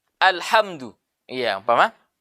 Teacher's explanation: kita membaca lafadz Alhamdulillah di sini kalau kita perhatikan yang digunakan menggunakan huruf H ini nanti makhrojnya adalah tengah tenggorokan